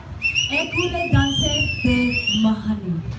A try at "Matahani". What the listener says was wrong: you gotta pronounce the T.